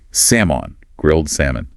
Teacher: we do not pronounce the L. It's completely silent.